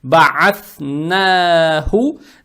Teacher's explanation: Далее стоит буква Ха, она мягкая, на выдох произносится с даммой.